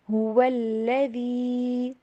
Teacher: وا کو W sound کے اوپر پڑھیے اور ہا کی آواز کلیئر